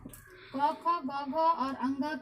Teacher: जिस प्रकार क ख ग घ और अंग का उच्चारण कंठ से होता है, जो कि हमारे मुख के अंदर का भाग है, और हमारी जिह्वा कंठ को स्पर्श करती हुई ये ध्वनियां बाहर की ओर निकलती है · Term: स्पर्श व्यंजन